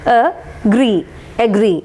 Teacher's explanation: It is a disyllabic word, agree, agree. Stress is marked on the second syllable